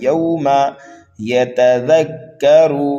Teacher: زال کو نرمی کے ساتھ پڑھیں گے اور را کو پر کر کے پڑھیں گے